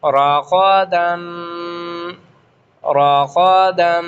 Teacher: را کے اوپر جب زبر ہو تو اس کو موٹا پڑھا جاتا ہے، اور غین تو آلریڈی اس کو موٹا ہی پڑھا جاتا ہے۔